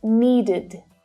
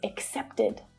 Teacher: this is an unstressed vowel sound and it creates an extra syllable which is always unstressed so the sound is short and it's low in pitch and it's pronounced like this when the regular verb in its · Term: id